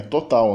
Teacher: o O de total nunca vira tutal